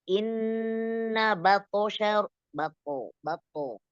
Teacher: To-nya qalqalah mufakhama. Ditebalkan ya.